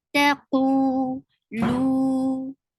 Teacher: it is 2 counts long vowel, because it is waw sakina followed by dhamma